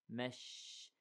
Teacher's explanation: the sound of the sheen spreads in the air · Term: tafashi